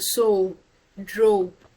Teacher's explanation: you notice that your your lips automatically are rounded when you say such words